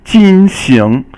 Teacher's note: 进 行 is fourth tone and second tone